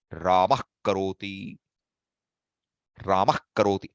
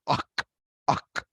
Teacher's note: That sound is ak, ak. That comes from the bottom of your throat. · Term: ardha visarga